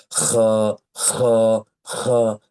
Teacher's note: তাহলে খ অক্ষরটির মাখরাজ হচ্ছে কণ্ঠনালীর শেষ ভাগ হতে উচ্চারণ করতে হয়। এবং অবশ্যই এই খ উচ্চারণ করার সময় একটু খড়খড়ি রকমের আওয়াজ আপনাকে নিয়ে আসতে হবে।